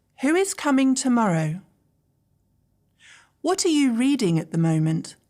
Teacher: Listen carefully to the downward pitch in my voice. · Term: falling intonation